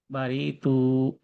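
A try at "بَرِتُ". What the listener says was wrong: রিতে একটু টান হয়ে গেছে, বারিতু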